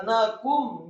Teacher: nunnya dibaca tipis fathah 1 harokat, kemudian kafnya dibaca tipis. Ingat, ini bukan huruf qaf tapi kaf.